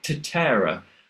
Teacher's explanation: I'd do it with a very English alveolar t